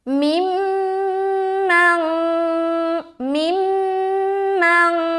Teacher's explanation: आगे मिम्मन मिम्मन, यहाँ पर पहला मीम के ऊपर शद है, मीम मुशद्दद का गुन्ना कर रहे हैं